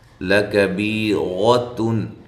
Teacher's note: لام کو باریک پڑھنا ہے، کاف کو باریک پڑھنا ہے ، بی یا مدہ ہے، اور را کو موٹا کرنا ہے،